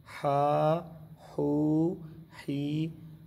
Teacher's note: ہا حروف حلقی کا لفظ ہے، یہ حلق جو گلا ہے اس کو حلق کے درمیان والے حصے سے ہا نکلتا ہے